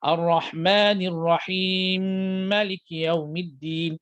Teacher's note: Sambung dalam keadaan ma itu tidak dipanjangkan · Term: idgham mutamatsilan kabir